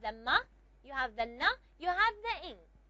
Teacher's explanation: the ma is bilabial, the na is alveolar, and the ing is velar. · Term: nasal consonants